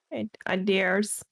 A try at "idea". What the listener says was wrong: It's idea. Yeah, there's no R.